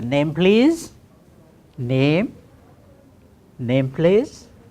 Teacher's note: you have to ask name with the rising tone